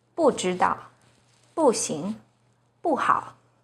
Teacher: When 不 is followed by a non-4th tone, which are the 1st, 2nd, and 3rd tones, it's pronounced as the 4th tone, as in 不 知 道, 不 行, 不 好.